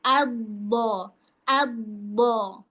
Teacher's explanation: Istithalah itu memanjangnya makhraj huruf dod. · Sisi lidah bagian dalam bertemu sepanjang gigi geraham atas.